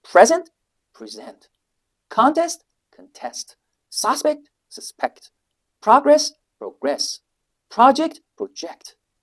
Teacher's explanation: So the noun becomes a verb. If you shift its stress from the first syllable to the second one.